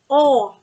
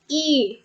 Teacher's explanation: the position of lips rounded forwards